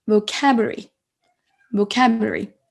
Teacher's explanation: Vous voyez que j'accentue en fait sur la deuxième syllabe.